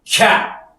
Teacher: 새는 소리 앞에서의 모음들은 길게 발음하지 않습니다. 짧게 발음을 합니다. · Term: 단모음